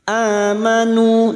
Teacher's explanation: Namanya mad badal, cabang dari mad tabi'i, 2 harokat kita panjangkan. Amanu, nu dimad diikuti waw sukun 2 harokat mad tabi'i · Na amanu, a hamzah yang berharokat alif kecil di atas atau fathah berdiri ini namanya mad badal. Namanya mad badal, cabang dari mad tabi'i, 2 harokat kita panjangkan.